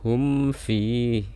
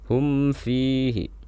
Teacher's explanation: Kita baca huruf mimnya, ditahan suaranya sebentar, kemudian kita lafalkan fa-nya. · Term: izhar syafawi